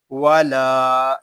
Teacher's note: لام الف زبر لا، ولا. یہاں لام کو ہم ایک الف تک کھینچ کر پڑھیں گے کیونکہ یہاں پہ الف مدہ ہو رہا ہے